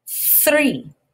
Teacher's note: my voice isn't turned on you can't feel anything happening in your throat